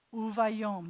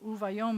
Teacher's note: U, va, yo, and a final mem. Uvayom, the accent's on the last syllable